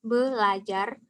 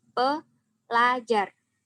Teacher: fonem R pada morfem ber dan per akan berubah menjadi fonem L apabila bertemu dengan morfem-morfem seperti ajar. Misalnya, morfem ber ditambahkan dengan ajar menjadi belajar.